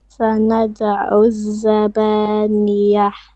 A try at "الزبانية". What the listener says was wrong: No, that's middle throat. Try to make it more softer and more bottom throat.